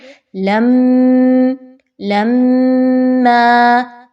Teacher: آواز کو ناک میں لے کر جائیے اور روک کے رکھیے تھوڑی دیر۔ لَمَّا، اسی کو غنہ کہا جاتا ہے۔